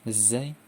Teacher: Ada zai ya, desis yang digetarkan, zai. Kemudian sin dan sod, itu huruf sofir atau yang berdesis.